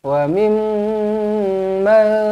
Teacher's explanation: Terus rapat bibir, dengungkan dua harakat. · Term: mim sabdu